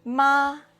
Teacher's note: The first tone is high and flat.